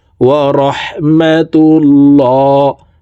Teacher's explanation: আল্লাহ শব্দের আগের হরফে জবর অথবা পেশ হইলে এই লামকে ল অর্থাৎ মোটা করিয়া পড়িতে হয়